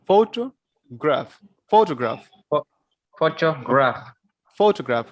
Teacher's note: and here we are putting stress on the first syllable, photograph.